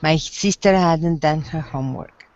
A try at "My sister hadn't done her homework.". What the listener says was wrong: You said the H again.